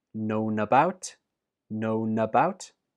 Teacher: Known is stressed, and the last sound in known is n that links to about